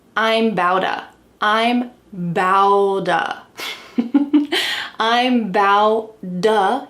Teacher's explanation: There are T's surrounded by vowels, so what happens? We can change them to a D sound. And this is all gonna link together in one fast word.